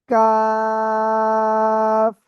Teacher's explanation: জিহ্বার গোড়া থেকে একটু আগে বাড়িয়া তার বরাবর উপরে তালুর সাথে লাগিয়ে এই অক্ষরটা উচ্চারণ হবে